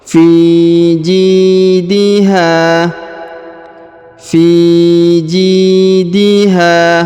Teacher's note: huruf Ji dipanjangkan dua harakat karena di depannya terdapat Ya Sukun